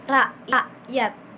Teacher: Untuk K hamzah ini, K hamzah itu menahan aliran udara di tenggorokan, kayak melepaskannya.